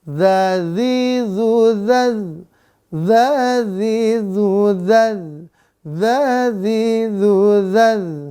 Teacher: ujung lidah ujung gigi seri atas sifatnya dua tipis napas tertahan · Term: huruf dza